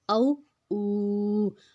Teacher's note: پیش آ گیا اور ساتھ واو آ گیا، واو کے اوپر جازم آ گیا، تو ہم اس کو 2 حرکت لمبا کھینچیں گے